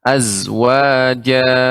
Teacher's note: zainya itu termasuk huruf yang sofir ya, sifatnya sofir sehingga tajam.